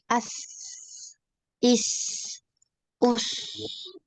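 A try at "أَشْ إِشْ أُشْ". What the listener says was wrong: Lagi ash ke tengah ya. Ash, ish, ush. Setengah lidah ya, setengah lidah. Nah ini masih di ujung, ya, gitu ya.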